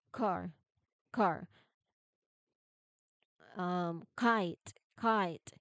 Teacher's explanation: you start with the back of your tongue sealed against the soft palate, and then release it sharply for the vowel. · So if you put your hand on your throat while you practice, you should not feel any vibration or buzzing. It should be a sharp, clean, and aspirated burst of air, much like the P and T sounds. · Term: K consonant